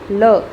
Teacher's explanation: जब भी हम ल को बोलने का प्रयास करेंगे तब हमेशा ये ध्यान रखना कि अपनी जीभ के पास से हवा निकलती हुई जाती है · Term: पार्श्विक